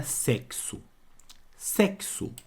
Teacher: esse X tem som de cs juntos · ele tem dois sons é o som do CS junto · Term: dífono